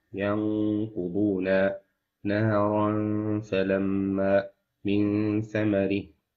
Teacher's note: And the letters of Al-Ikhfa is the remaining letters apart from Idgham, Izhar, and Iqlab letters. You do Ikhfa, you hide the Nun with two counts Gunna.